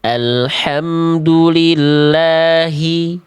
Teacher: Jadi hak besarnya jelas tanpa berlebihan tapi tidak samar.